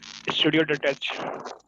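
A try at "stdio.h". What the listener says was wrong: stdio, not studio. Basically studio is a wrong word. stdio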